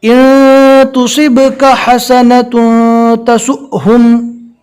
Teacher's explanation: جھٹکا دے کر پڑھیں گے جہاں پر بھی جزم والا حمزہ ہے